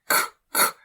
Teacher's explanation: the K in Navajo is pronounced a little bit stronger with a lot of breath.